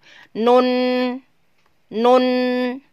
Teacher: Tetapi bukan disebut huruf lidah, tetapi dia disebut huruf khoisum atau huruf hidung karena berakhir di hidung